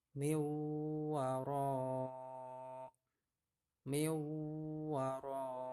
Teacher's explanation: Tulisannya min waroi. Nah, minnya itu hilang, lebur ke wawu ya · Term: idgham bihuna